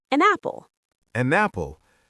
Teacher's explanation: It sounds like the n belongs to the apple. · if a word ends with a consonant like N and the next word starts with a vowel like A, we link them.